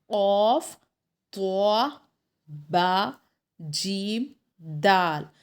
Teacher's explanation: جب ہم ان حرف کو ادا کرتے ہیں تب قلقلہ کی آواز آتی ہے، یعنی گونج پیدا ہوتی ہے آواز میں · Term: حرف مقلقلہ